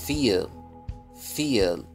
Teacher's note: ولا نقول فيل نعمل ما يشبه القلقلة